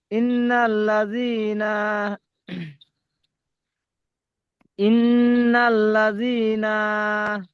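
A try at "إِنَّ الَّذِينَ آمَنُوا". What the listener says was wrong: নুন টান হবে না।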